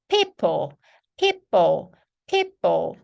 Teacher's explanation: 발음이거든요 근데 완전히 그 왜 그 립스틱 바르고 하는 것처럼 그렇게 아예 입술을 먹었다가 다시 파 하면서 터트리셔야 되는게 피 발음이에요